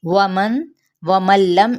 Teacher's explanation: ومن لم، اب یہاں پہ ادغام بلا غنہ کا قاعدہ، کیونکہ نون ساکن کے بعد لام آ رہا ہے تو ہم یہاں پہ غنہ نہیں کریں گے